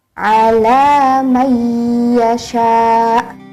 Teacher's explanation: bertemu dengan huruf ya harus dimasukkan ke dalam huruf ya maka huruf ya ini seperti ditasydidkan ditekan selama 2 harakat · Ditekan selama 2 harokat. Ala may yasha itu adalah didengungkan, karena idgham bil ghunnah adalah dibacanya dengan berdengung. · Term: Idgham Bighunnah